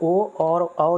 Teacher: ओ और औ जो है यह कंठोस्थ वर्ण के उदाहरण है। कंठ और ओष्ठ की सहायता से बोले जाते हैं।